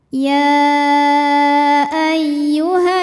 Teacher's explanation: cara membacanya dengung jadi bunyi n tahan sampai ada suara masuk hidung kurang lebih dua harakat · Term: ghunah musyaddadah, gunnah musyaddadah